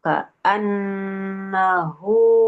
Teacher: nah biar enggak lupa u panjang ya dua harakat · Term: mad silah